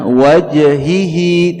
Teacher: Naam, di sini ada qalqalah, tentu di sini qalqalah sughra ya, qalqalahnya ringan, kecil ya, tidak berat ya, jangan sampai qalqalahnya membuat saktah